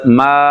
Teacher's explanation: اس کی آواز ناک میں نہ جائے اور اینڈ پہ نون غنہ جیسی ساؤنڈ جو ہے وہ بھی نہیں آنی چاہیے